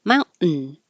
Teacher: Mountain, this is another syllabic N where the N noise becomes its own syllable. You go up for the T for mount and hold it there, and then make the N noise.